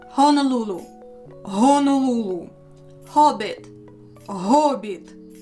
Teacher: H in Ukrainian sounds like English H, but with more voice in it. It's a breathy voiced counterpart of the English H.